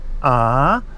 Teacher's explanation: a rising tone, ah, so it starts off fairly normally and then goes up as it progresses